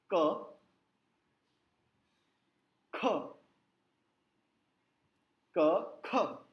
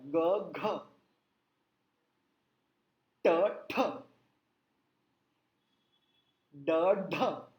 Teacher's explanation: हर दूसरे अक्षर पे हवा लगती है, हाथ पे जोर की हवा लगती है।